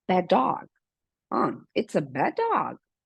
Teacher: E realmente o D que vai ser falado vai ser do dog. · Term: consonant plus consonant